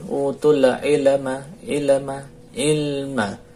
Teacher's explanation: Perhatikan lam sukunnya, jangan sampai memantul.